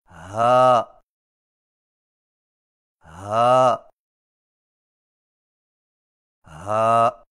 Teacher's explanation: ہا اور ہا کی آواز میں فرق۔ ہا کی آواز حلق سے بغیر رگڑ کھائے نکلتی ہے